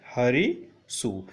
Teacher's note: दंती सकार को सदैव मूर्धनी सकार हो जाता है। परंतु यह ध्यान देने योग्य बात है कि उस दंती सकार को मूर्धनी सकार होगा जो दंती सकार आदेश से वहाँ पर आई हो या प्रत्यय का हो।